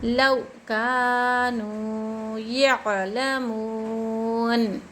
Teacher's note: واو مد ہو رہا ہے، یہاں پر ایک الف کی مقدار کھینچنا چاہیے